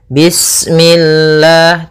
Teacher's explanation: lafal Allah ketika sebelumnya kasrah maka dia dibaca dengan tipis, ya, dengan L.